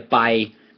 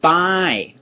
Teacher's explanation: Bpaai is middle tone and bpaai is falling.